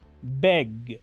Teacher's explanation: cuando pronuncio la g la última consonante de este verbo sí estoy emitiendo un sonido desde mis cuerdas vocales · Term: consonante Sonora, consonante sonora